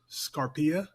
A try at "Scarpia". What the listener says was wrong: Scarpia. Scarpia. Yeah, so the stress is at the beginning of the word and not in the middle.